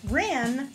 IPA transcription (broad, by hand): ræn